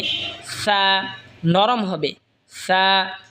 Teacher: জিহবার আগা সামনের উপরের দই দাঁতের আগার সঙ্গে লাগা উচ্চারণ হবে সা নরম হবে সা